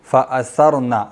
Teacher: سا باریک ہوگی، را موٹی. فأثرنا، اور پھر نون پہ چونکہ ایک زبر ہے اس لیے لمبا نہیں کریں گے.